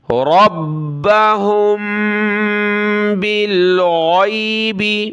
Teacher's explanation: اب میم کلرفل ہے، یہاں ہم نے ناک میں آواز پیدا کرنی ہے کیونکہ میم ساکن، میم کے اوپر یہ سکون ہے، میم ساکن کے بعد اگلا حرف با ہو تو وہاں ہم نے ناک میں، میم پر ناک میں آواز چھپانی ہوتی ہے